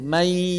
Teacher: Dan ketika kita tutup mulut, maka ada suara rongga hidung. May. Bukan di hidung semuanya. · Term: gunnah